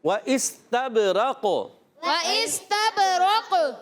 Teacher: قاف یہاں ساکن ہو رہا ہے، ساکن ہوگا تو قاف میں بھی قلقلہ ہوگا